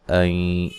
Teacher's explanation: نون ساکن کا ادغام مع الغنہ ہے